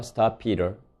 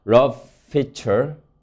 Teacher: 두 개의 동일한 분절음이 있을 때 스탑 피터를 각각 스타프 피터 이렇게 프를 두 번 발음하지 않고 하나의 긴 소리 피 장음으로 소리 냅니다. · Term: 장음화